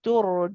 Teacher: When a ra has a dhamma before it, we pronounce this ra heavy. So be careful not to say tur. · You want to say tur, it's heavy, tur. And the ra is tawassut, which means you do stay on it for a bit.